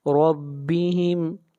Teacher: را کو موٹا پڑھا جائے گا، را کے اوپر زبر ہے